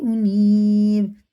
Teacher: یا ساکن سے پہلے زیر ہے تو کھڑے زیر کی طرح کھینچ کے پڑھیں گے ایک الف کے برابر